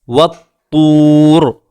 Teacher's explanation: را ساکن ہے، اس سے پہلے واو بھی ساکن ہے، اس سے پہلے طا کے اوپر پیش ہے جس کی وجہ سے یہاں را پر ہو رہی ہے